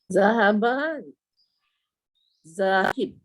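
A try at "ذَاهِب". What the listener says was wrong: panjang lagi, tak cukup panjang tu. Zahib.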